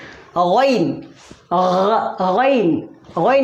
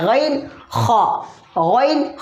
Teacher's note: गैन, गैन, गैन यहाँ से अदा होता है, गैन ख, गैन ख, आखिरी हलक से गैन ख अदा होता है।